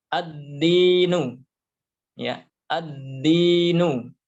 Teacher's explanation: Jadi alif lamnya hilang, masuk ke huruf dal, ditandai dengan tasydid. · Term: syamsiyah